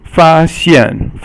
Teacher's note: The yi sheng is the high tone that is level · Fa is yi sheng or first tone, and then xian is the fourth tone, which is the falling tone